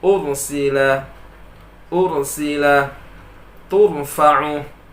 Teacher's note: Maka Ra pada contoh ini dibaca tebal, sebelumnya berbaris dhammah. Tak boleh dibaca ursila, bacaan salah.